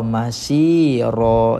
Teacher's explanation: So bila jumpa dengan mad iwad kita buang satu baris jadi ra, masira, dan panjangkan 2 harakat.